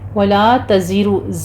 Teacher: زے کی آواز سیٹی کی لے کر آنی ہے، را مفخم پڑی جائے گی